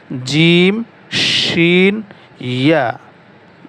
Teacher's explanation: 6 নম্বর মাখরাজ, জিহ্বার মধ্যখান তার বরাবর উপরে তালুর সঙ্গে লাগাইয়া উচ্চারিত হয় জিম শিন ইয়া